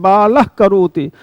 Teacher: तो इस अर्ध विसर्ग का उच्चारण जैसे करते हैं बालह करोति, तो ल और का के बीच में जो एक स्वर का उच्चारण हो रहा है उसे कहते हैं जिह्वा मूली।